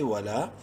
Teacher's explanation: لام کو 1 الف کے برابر لمبا کریں گے الف مدہ کی وجہ سے